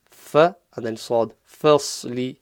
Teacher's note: Common mistake is turning the fa into a full mouth as well, so it's reading it fas, which is wrong. The fa has to remain empty mouth, so fas, fa, and then sad, fasli.